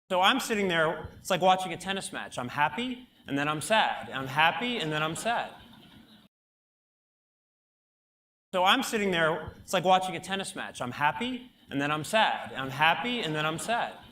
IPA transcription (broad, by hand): æ